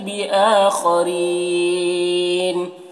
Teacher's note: खौ को पुर पढ़ेंगे, हुरूफ मुस्तालिया में से है। रॉ को बारीक पढ़ेंगे, यहाँ पर या मद्दा है, और यहाँ पर वक्फ़ करेंगे तो नून का ज़बर सुकून से बदल जाएगा, तो फिर यहाँ पर भी मद्द आरिज़ वक्फ़ी होगा, तो इस तरह पढ़ेंगे।